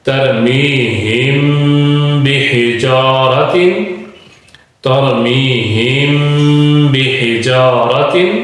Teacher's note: اگر میم ساکن کے بعد با آ جائے تو وہاں پہ بھی غنہ کیا جائے گا